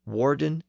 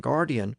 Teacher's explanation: whereas the Normans of northern France pronounced those words with their original W sound the French speakers further south around Paris pronounced them with a G sound